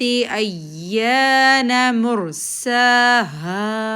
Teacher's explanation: ہے، الف مد 2 کاؤنٹ، نون کے اوپر زبر 1 کاؤنٹ، میم کے اوپر پیش، ہونٹ راؤنڈ ہو جائیں گے، رو پر ان راؤنڈ ہوں گے اور یہ رو موٹی پڑی جائے گی